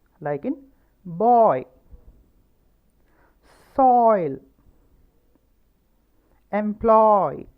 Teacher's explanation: O എന്ന ശബ്ദവും ഇ എന്ന ശബ്ദവും ചേർന്നത്. ഓ എന്ന ശബ്ദം ഇ എന്ന ശബ്ദത്തിലേക്ക് ചെല്ലുന്ന പോലെയാണ് ഈ ശബ്ദം. ഓയ്, like in boy, soil, employ. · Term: diphthong